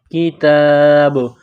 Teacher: با کے اوپر جب سکون آئے گا تو یہاں پر قلقلہ کریں گے